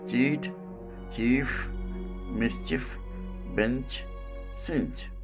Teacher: Manner of articulation affricate. Quality unvoiced or voiceless. This is called palato-alveolar voiceless affricate.